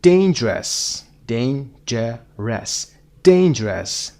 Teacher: number 5 dangerous, dangerous, dangerous. دین رو بیشتر میشنوید. استرس روی دین هست.